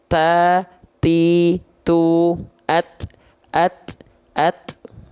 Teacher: Ujung lidah kita menyentuh dengan pangkal gigi seri atas kita. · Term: huruf ta